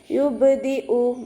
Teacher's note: യുബ്ദി ഉ ബ കൽക്കലയുടെ ലെറ്റർ ആയതുകൊണ്ട് ഫുൾ സുക്കൂന് കൊടുക്കുക കേട്ടോ. യുബ്ദി ഉ ഹംസയെ നല്ലോണം ക്ലിയർ ആക്കി കൊടുക്കുക. അക്സൽ ഹൽക്കിൽ നിന്നാണ് ഹംസ വരുന്നത്. സൗണ്ടിന് അയിനായി പോവാൻ ചാൻസ് ഉണ്ട്, ശ്രദ്ധിക്കുക കേട്ടോ.